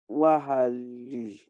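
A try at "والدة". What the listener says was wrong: No, this is not wa'a. This is wa. Wa. Walida. So the elongation is just double A.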